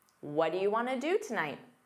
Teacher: Want to becomes wanna in fast speech. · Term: what'ya